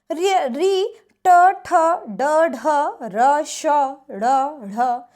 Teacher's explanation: ये आपकी मूर्धा से बोल जाते हैं और इसका नाम दिया गया है आपको मूर्धन्य